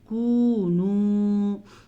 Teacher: جب بھی واو ساکن سے پیچھے پیش آئے تو اسے بھی واو مدہ کہتے ہیں۔ یہاں پہ ہمارے پاس 2 واو مدہ ہیں، دونوں کو کھینچ کے پڑھیں گے۔